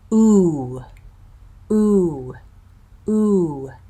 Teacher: that vowel how round my lips are oh very round my the root of my tongue is back into my throat and high my tongue and my lips are tight so it's a tense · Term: high back tense vowel